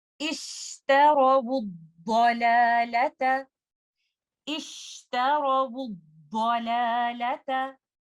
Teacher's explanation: उसके बाद लाम के बाद टाइनी अलिफ या अलिफ एक मद कंडीशन में है, लाम एक लाइट लेटर है तो अलिफ मद लाइट होगा, और उसके बाद आने वाले दोनों लेटर्स लैम और ता ये भी हम लाइट पढ़ेंगे, इनको हम हैवी नहीं पढ़ेंगे।